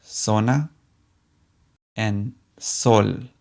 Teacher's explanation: letter is seta it sounds like the English s in fact both the Z and the s in Spanish sound just like the English s